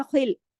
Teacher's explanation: खा मोटा पढ़ा जाए, खिल, और खराश के साथ, क्योंकि हैवी फैमिली का है।